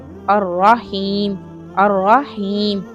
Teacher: रा को क्या करेंगे? मोटा करेंगे, तशदीद के साथ अदा करेंगे इसे